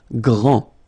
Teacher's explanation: Grand, final D, not pronounced, okay, G-R, gr, gr, gr, and then the nasal en